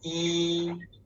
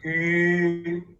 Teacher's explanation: When you pronounce yi, your mouth is flat. Yi. Yeah. But when you pronounce yu, you just make your mouth round. Yu. Yeah.